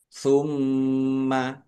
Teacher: Mim tasdid bacaan ghunah atau mendengung. Ditahan biar tampak mendengungnya.